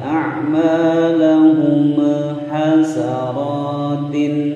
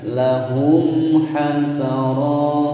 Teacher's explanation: ada mim sukun bertemu ha, dibaca jelas, jangan dipantulkan, jangan didengungkan